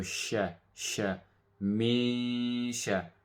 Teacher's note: with an ikhfa, it means we hide the noon sound, and also an advanced level of ikhfa will be that we merge the sound with the letter that's after it, which is in this case a sheen.